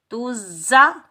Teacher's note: زا سختی اور سیٹی والا حرف ہے تو زا پر ہم سیٹی کی آواز نکالیں گے، بغیر کھینچے پڑھیں گے۔